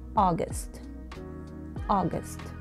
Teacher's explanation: حرف اليو في كلمة August تلفظ خفيفة جدا جدا، يعني تقريبا كأنه غير موجودة